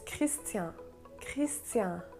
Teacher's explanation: the n in christian in french it's silent